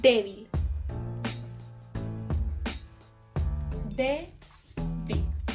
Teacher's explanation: Su acento se encuentra en la primera sílaba. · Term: grave